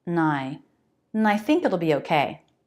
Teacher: Another reduction more common is just to say the n sound